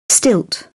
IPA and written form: stɪlt (stilt)